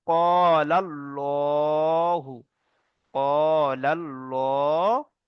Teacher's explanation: আল্লাহর লামকে পুর অর্থাৎ ল বলতে হবে